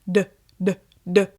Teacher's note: You can feel your voice box vibrating.